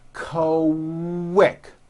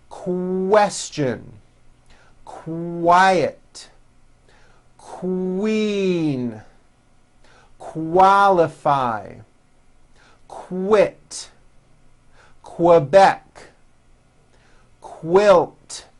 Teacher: Q sounds are made with the k sound and the W sound put together